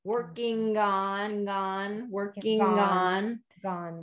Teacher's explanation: so you're getting it back in the back of this throw i do want it to be more of a voiced g instead of a voiceless k sound